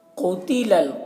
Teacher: क़ाफ को मोटा करके पढ़ेंगे और ता को बारीक।